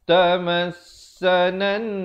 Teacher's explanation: nun sabdu wajibul gunnah dengung 2 harakat.